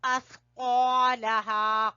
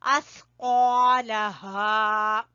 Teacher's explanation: قاف کو زبان کی جڑ سے اور سا کو زبان کی نوک اور سامنے والے دو دانتوں کے سرے سے